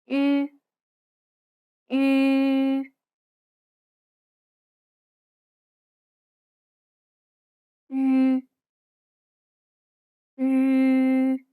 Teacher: This is like the double E sound in C, but with rounded lips. Try saying the double E in C while rounding your lips.